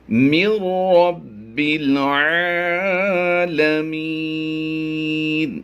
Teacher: یہاں پر حروف مدہ کے بعد یعنی یا مدہ کے بعد سکون عارضی ہے، تو یہاں پر مد عارض ہوگی۔